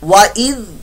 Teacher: वइज़ यहाँ पर ज़ाल की जगह ज़ा की आवाज नहीं आनी चाहिए। ज़ाल है लेकिन यहां पर अगर आपने ज़ा की आवाज निकाली तो ये आपकी लहने जली बन जाएगी।